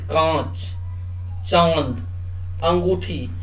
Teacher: अनुनासिक इसका उच्चारण करते समय ध्वनि नाक और मुंह दोनों से निकलती है